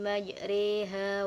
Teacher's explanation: majreha majreha ini dibaca are karena termasuk dalam imalah kimala adalah memiringkan harakat fathah kepada harokat kasroh